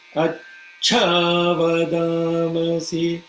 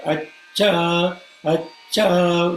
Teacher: You are saying acha still. Acha, complete aspiration should be there